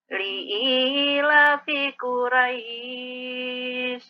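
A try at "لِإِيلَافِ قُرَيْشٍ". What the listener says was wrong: Lamnya ditinggalin tadi panjangnya. Ulangin, Bu.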